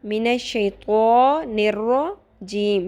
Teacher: سب کچھ باریک ہے سوائے اعوذ باللہ میں 2 حروف کے اور وہ ہیں تو اور رجیم میں رو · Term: پر